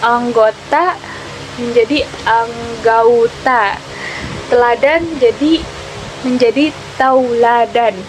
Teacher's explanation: proses perubahan vokal tunggal menjadi vokal rangkap secara berurutan. Perubahan vokal tunggal ke vokal rangkap ini masih diucapkan dalam satu puncak penyaringan. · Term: diptongisasi